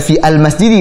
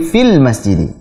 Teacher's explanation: Jadi jelas ya, definisi dari hamzah wasal adalah hamzah yang hanya terbaca di permulaan kalam, di permulaan pembicaraan saja. Kalau dia disambung, ada yang mendahului sebelumnya, maka hamzahnya tidak terbaca.